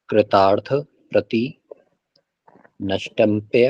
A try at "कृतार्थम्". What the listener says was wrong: कृतार्थ नहीं है ये, कृतार्थ नहीं है, कृतार्थम है ये था के ऊपर जो बिंदी है ना, इसको मैं बोलेंगे। कृतार्थम।